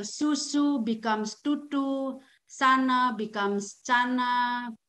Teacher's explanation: Stopping means the fricative sounds replaced with stop sound.